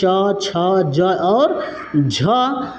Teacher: स्पर्श संघर्षी वे है कि स्पर्श के साथ-साथ उसमें संघर्ष की ज्यादा आवश्यकता पड़ती है तो उसको अ स्पर्श संघर्ष कहते हैं इसमें आते हैं च